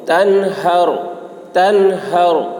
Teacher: نون میں اظہار ہوگا، نون کو جلد ادا کریں گے